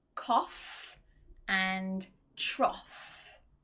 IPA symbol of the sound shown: ɒf